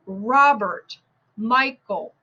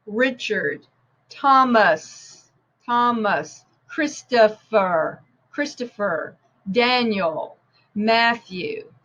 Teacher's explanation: it's always stressed on the first syllable and listen for the schwa